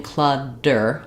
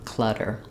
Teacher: I'm not blocking the air and forcing it out. I'm just tapping my tongue up lightly for one touch behind my teeth and then bringing it back down with my voice on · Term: flap